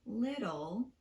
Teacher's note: So a word like little still gets a tapped T because that dark L at the end of the word is pronounced ul. So the T is actually falling between vowel sounds.